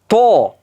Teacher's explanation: Yo'g'on. Istilo degani yo'g'on degani. Ya'ni til orqasi ko'tarilyapti, yo'g'on talaffuz qilamiz. To deyapmiz-ku, o'sha.